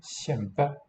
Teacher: Note the weakening of the K when the yod is there.